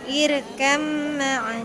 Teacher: Ya, jadi ketika disambung maka irkab ma'ana, baknya hilang, masuk ke huruf mim. Irkab ma'ana, jangan, tapi irkab ma'ana. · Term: mutajanisan